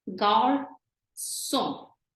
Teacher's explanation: instead of a K sound, we have an S sound